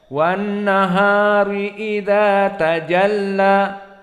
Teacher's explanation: Maka tajalla di sini hukumnya mad tabi'i bukan mad arid lis sukun. Sehingga hanya cukup 2 harokat saja.